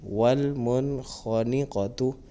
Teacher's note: نون ساکن کے بعد خا حروف حلقیہ میں سے ہے، تو یہاں پر اظہار کریں گے یعنی غنہ نہیں کریں